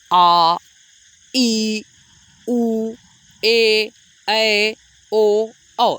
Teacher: दीर्घ स्वर वह स्वर है जिसको बोलने के लिए ह्रस्व स्वर से दोगुना समय लगता है।